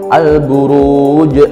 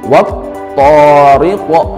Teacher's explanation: menekan lebih kuat makhraj huruf dari huruf qalqalah yang bersukun tersebut sehingga lafal huruf qalqalahnya memantul lebih kuat dan jelas dibandingkan ketika membaca qalqalah sugro. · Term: qalqalah kubro